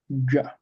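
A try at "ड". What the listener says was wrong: That's a duh. Yes, the third letter in the third varga, duh, is cerebral, so your tongue is going straight up.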